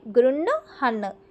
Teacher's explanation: మనకి హ కింద ఏ ఒత్తు వచ్చినా సరే మా ఒత్తునా అనా ఒత్తు అయినా సరే మనం ఆ ఒత్తుని ఫస్ట్ పలకాలి తర్వాత హ ని పలకాలి ఇప్పుడు దీన్ని గృణహన్ అని పలకాలి గృన్ హన్ అనా తర్వాత హ పలకాలి.